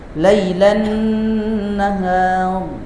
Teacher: alif lamnya yang dibaca samar seakan tidak alif lam. Tidak ada alif lam padahal. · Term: syamsiyah